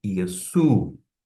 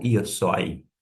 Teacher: Em vez de oi, você pronuncia u. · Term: som de u